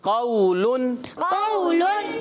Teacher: نون ناک میں آواز جائے گی. قولن قولن کیونکہ تنوین ہمیشہ نون ساکن ہوتا ہے.